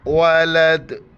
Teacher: دال ساکن جب ہو جائے وہاں پر ہمیں قلقلہ کرنا ہے، جھٹکے کے ساتھ پڑھنا ہے